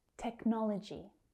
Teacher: That second syllable is stressed.